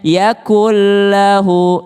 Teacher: Nun ketemu dengan lam, melebur ke lamnya.